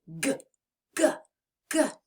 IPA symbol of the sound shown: g